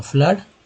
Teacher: फ्लड में double O का उच्चारण जो है आ के रूप में हुआ